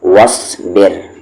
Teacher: وا کو صا میں وس، بی کو را میں بر، صاد ہیوی ہے، را یہاں پر لائٹ ہے